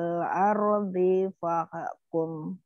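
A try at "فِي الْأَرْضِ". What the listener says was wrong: Umi, fil ardi jangan diayun.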